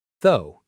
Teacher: A lot of learners try to say every letter, but it's actually very short. Though, almost like the word go, but with a th sound.